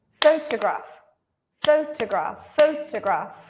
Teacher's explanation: second two syllables are much shorter